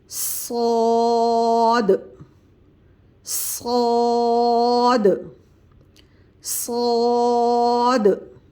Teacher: سامنے کے دانت اوپر والے اور اسی طرح نیچے والے دانت آپس میں ملائیں گے اور پھر سیٹی اور سختی سے صاد کی ادائیگی کریں گے